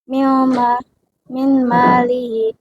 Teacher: Nun mati dilebur dengan gunah karena bertemu huruf mim. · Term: Idgham bil gunah